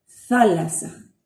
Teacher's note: lengua detrás de los dientes casi cerrados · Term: z peninsular